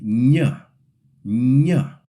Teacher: your tongue touches the roof of your mouth just behind your teeth, like when you say the English N, but then it slides into a quick Y sound